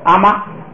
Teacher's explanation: 第2个词就跟着前头就说就完了，就变成平声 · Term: 高平调